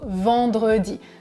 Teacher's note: Et enfin, le E, comme dans le mot vendredi. Ce dernier E, c'est le E caduc. Bon, il n'est pas toujours prononcé de la même manière. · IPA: [ə]